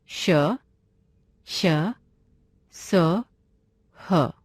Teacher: हवा के रगड़ खाने से मुख में गर्मी यानी ऊष्मा उत्पन्न होती है, अतः इन्हें ऊष्म व्यंजन कहा जाता है।